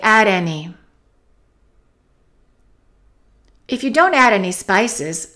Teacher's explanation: usually when the tea is after an N and before a vowel it often just gets eliminated